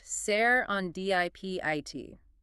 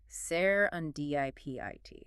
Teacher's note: Stressing that third syllable dip is critical.